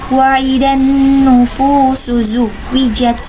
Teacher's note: Wa idan nufusu, alif lam bertemu dengan salah satu huruf syamsiah yaitu nun, maka dinamakan alif lam syamsiah dan alif lamnya tidak dibaca. Sedangkan nunnya sendiri yaitu bacaan gunnah karena nunnya ditasydid dan harus dibaca dengan mendengung.